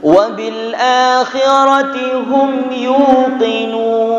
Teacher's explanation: Wabil akhirati hum mim bersukun, tidak boleh berdengung.